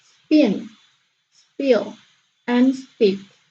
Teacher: and then the second one is middle position after stop and it pronounced unaspirated or without air puff